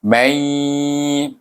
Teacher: Menunjukkan dia dibaca dengan idgham ma'al gunnah sebab dia bertemu dengan ya. Nun sukun bertemu dengan ya, hukumnya dibaca dengan idgham ma'al gunnah, iaitu dengan dengung.